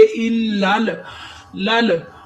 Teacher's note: اب لام ساکن ہے، یہ دیکھیں نا لام جو ہے وہ ساکن ہے، ساکن حرف ہمیشہ ایک دفعہ ہی پڑھا جاتا ہے، اپنے سے پہلے متحرک حرف کے ساتھ ملا کر پڑھیں گے، الل۔ ہم لام کو لام کے ساتھ ملا کر یہ والا جو الف ہے اس کو ختم کر دیں گے